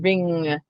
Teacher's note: in the NG combination, ring, your N is sliding further back.